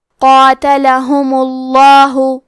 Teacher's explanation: قاتلہم، آخری میں کیونکہ حرف المیم پہ پیش ہے تو ہم لفظ الجلالہ مطلب کلمت اللہ کے لام کو موٹی آواز میں پڑھیں گے